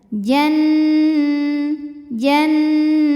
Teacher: karena Nun tasydid maka kita bunyikan dengung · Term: ghunah musyaddadah